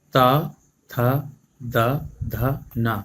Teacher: जब हम इन 5 वर्णों का उच्चारण करेंगे तो हमारी जीभ दांत से टकराएगी, दांतों को स्पर्श करेगी, छुएगी। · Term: ता वर्ग